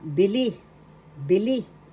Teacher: First syllable B, second syllable li. The accent is in the second syllable